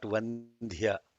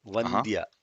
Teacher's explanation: It is not Vandhya. Vandya, without Mahaprana. If you put the Mahaprana there, the meaning will be completely changed.